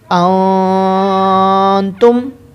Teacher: یہاں پر اخفا کا قاعدہ لگے گا، گنہ کریں گے۔